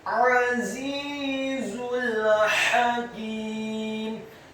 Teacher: huruf ha-nya dibaca tipis fathah satu harokat, huruf kafnya dibaca tipis kasroh dua harokat karena setelahnya ada ya sukun, dan huruf mimnya di akhir ayat dibaca sukun.